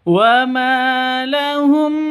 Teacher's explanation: Ma panjang dua ketukan karena ada alif diawali dengan fathah mad asli atau mad th'i.